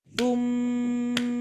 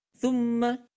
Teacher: itu cara baca dengan tiga ketukan